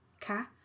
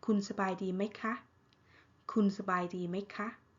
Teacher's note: And then the polite particles go at the end. If you're a female speaker, you've got to say ค่ะ high tone